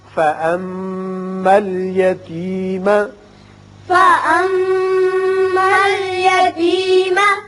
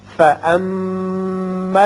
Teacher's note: میم مشدد ہے غنہ کریں گے.